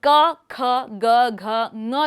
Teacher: मुख विवर में आगे बढ़ते हुए हमारे पास वीलर ध्वनियां आती हैं जो जीभ के पीछे के हिस्से और कोमल तालु का उपयोग करके व्यक्त की जाती है। जीभ का पिछला भाग कोमल तालु को बंद करने के लिए ऊपर उठता है · वीलर ध्वनियां आती हैं जो जीभ के पीछे के हिस्से और कोमल तालु का उपयोग करके व्यक्त की जाती है। जीभ का पिछला भाग कोमल तालु को बंद करने के लिए ऊपर उठता है और क, ख, ग, घ, ङ ध्वनियां इस तरह से व्यक्त की जाती है।